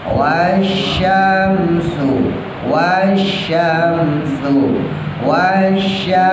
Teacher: Wasyam, shinnya tebal yang pertama, yang kedua baru tipis ya.